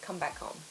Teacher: it's quite common to make the H sound quite soft